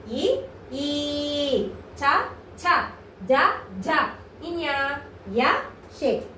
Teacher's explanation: దౌడ నుంచి పుట్టుకొచ్చిన అక్షరాలు కాబట్టి వీటిని తాలవ్యాలు అని చెప్పేసి అంటారు